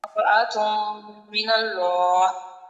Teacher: را کو بھی پر کرنا ہے کیونکہ را کے اوپر فتحہ ہے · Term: را کی تفہیم